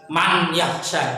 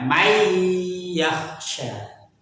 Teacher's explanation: nunnya nggak usah dibaca, n-nya langsung masuk ke huruf setelahnya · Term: idgham bihunah